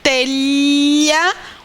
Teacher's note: Então, é uma consoante que a gente chama, inclusive, de palatal. Telha é alvéolo dental, porque o som do T, a gente empurra essa parte de trás do dente, né? Entre o dente e a gengiva.